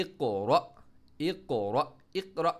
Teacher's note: ای کو قاف کے ساتھ باؤنس بھی اور ہیوی بھی